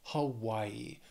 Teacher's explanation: Hawaii has three syllables stresses on that second syllable